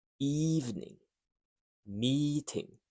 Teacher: This is long e sound. Clear and stretched. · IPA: /iː/